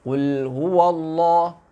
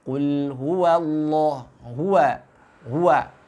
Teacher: Huruf waw sejatinya dia istifal, maka suaranya pun harus tipis.